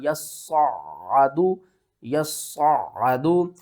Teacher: یا کو صاد کے ساتھ ملائیں گے، صاد کو موٹا کر کے بھی پڑھیں گے، سختی کے ساتھ بھی پڑھیں گے، پھر اس صاد کو عین کے ساتھ ملائیں گے اور عین کے اوپر بھی ہم نے سختی کرنی ہے۔